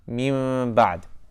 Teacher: That's why it's called Iqlaab, flipping, because you're flipping the noon sakina or Tanween to a soft meme to make it easier to pronounce that ba